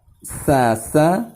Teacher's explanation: Huruf sin termasuk dalam huruf alisan, yaitu keluarnya huruf tengah dengan meletakkan ujung lidah paling depan pada dinding dua gigi seri bawah sehingga suara keluar di antara gigi seri atas dan gigi seri bawah